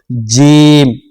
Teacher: जबान का बीच वाला हिस्सा ऊपर के तालू में जाकर टच हो जाता है, फिर ये वाला हरफ अदा होता है।